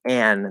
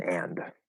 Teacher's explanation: nine times out of ten the d just isn't pronounced okay it's not even stopped it just disappears · Now, the first thing is that 9 times out of 10, the D just isn't pronounced. Okay, it's not even stopped. It just disappears. Okay, so the vowel, that also has some variations, but it's going to be more like an than and.